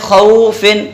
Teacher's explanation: صرف حروف لین میں سے ہے یہ، تو ایک الف کے برابر کھینچ لیں گے